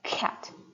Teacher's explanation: So the puff of air comes out as you are saying the K sound. So if you're saying cat, it comes out with the K, cat. · K is unvoiced and an aspirated stop. Now voicing is describing whether or not the vocal folds are vibrating or not.